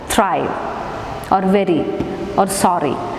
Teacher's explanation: single tap, and then it goes away. In such case we can call it as a tap or a flap.